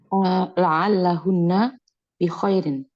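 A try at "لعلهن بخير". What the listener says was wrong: Nah, betul.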